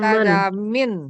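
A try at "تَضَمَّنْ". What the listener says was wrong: Tadamman nggak ada min. Karena berawalan tak nggak ada kasroh. Dhammah tengahnya.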